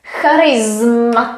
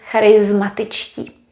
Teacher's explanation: We spell it with S, but we pronounce it as Z